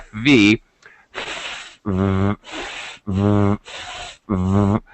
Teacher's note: If you hold your throat and you do FV, you can feel your voice vibrating.